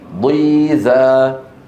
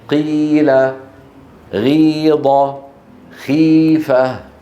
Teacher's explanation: وكذلك ضيزا، ضي شايفين مكسور قوي، ضيزا. عظيم، ضي مكسور قوي. أشد تفخيما من قيل، غيض، خيفة